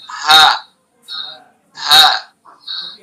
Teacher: छोटी ह सीने की तरफ से अदा होगी।